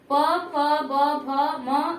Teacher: प, फ, ब, भ का उच्चारण करे और मेरा ओठ जो है एक दूसरे से टच ना करे, ऐसा हो ही नहीं सकता है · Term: ओष्ठ